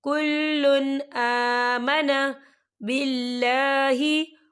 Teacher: تنوین کے بعد جو ہے حمزہ آ رہا ہے اور حمزہ جو ہے حروف ہلکی کا ورڈ ہے تو ہم یہاں اظہار کریں گے اور ہم اسے بنا غننے کے پڑھیں گے